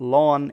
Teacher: it's lost the D at some point in Frisian, and then because of this, the vowel before it has become extended. It's become a lengthened vowel because you've lost a consonant.